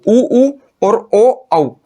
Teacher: जैसे ही हमने इन चारों स्वरों को बोला हमारे होठ की आकृति कैसी हो गई, वृत्त के समान गोल हो गई। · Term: वृत्ताकार स्वर